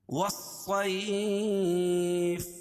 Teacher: والصیف، یہاں بھی الف لام کے بعد حروف شمسی کے 14 حرفوں میں سے صاد ہے، تو واو کو صاد میں ملائیں گے اور لام نہیں پڑھی جا رہی ہے. صیف وقف کی صورت میں یہ مد لین عارض ہوگا.